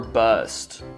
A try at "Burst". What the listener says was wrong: It's burst. You said bust. It's burst.